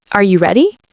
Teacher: Your voice goes up at the end. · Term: rising intonation